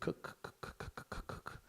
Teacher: Voiceless because there's no vibration of the throat. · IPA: /k/